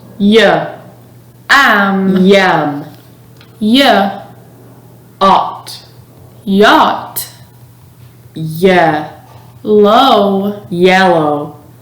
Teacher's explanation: The sound y is voiced, meaning your vocal cords vibrate when producing the sound. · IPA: /y/